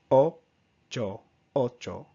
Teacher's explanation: English tends to add a small tail, is what I call it, on the end of the vowel sound, so we tend to go O, O, instead of just a cut off O sound. So in Spanish the sound is very short, sweet, to the point, just O